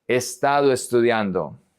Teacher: The O connects to the E. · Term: connections